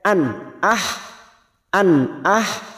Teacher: membacanya harus teg gas tidak boleh diseret an ah an ah fathah tanwin pada huruf hamzah ini kita baca jelas tanpa mendengung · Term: idhar halq, idhar halqi